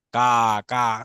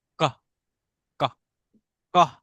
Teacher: এটা মানে খুব শর্ট, একদম শর্ট লাই উচ্চারণ হচ্ছে, এটা সাউন্ড জাস্ট কাকের মতো, যেন কাকা করছে কা, কা। তো কা হলে কিন্তু এটা আবার লং হয়ে যাচ্ছে, বাট ক, ক, ক সাউন্ড হচ্ছে শর্ট